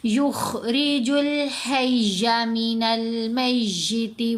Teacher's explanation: را کے نیچے یہاں زیر ہے تو را کو باریک پڑھیں گے، اور یہ جو خا ہے یہ ہمیشہ ہی موٹا پڑھا جائے گا کیونکہ یہ بولڈ لیٹرز میں سے ہے، موٹا پڑھے جانے والا حرف ہے۔